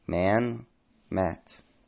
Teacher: the short a, as in man, raises and becomes distinct from the vowel in mat